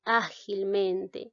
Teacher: Tiene dos sílabas tónicas, por lo tanto se le llama ditónica. Ágilmente, aquí observamos que en la palabra ágil, la mayor fuerza de voz recae en A, y en mente, en la sílaba men.